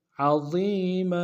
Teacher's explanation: وقت میں تنوین کو الف سے بدلیں گے